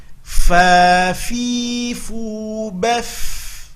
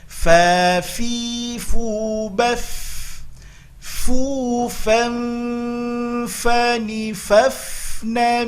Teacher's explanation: Tidak terlalu sulit, tapi hati-hati nampakkan mengalir nafas ketika membunyikan, karena ada sifat hamas pada huruf fa.